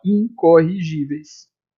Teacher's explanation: Esse N serviu apenas para nasalizar o I. Só para isso.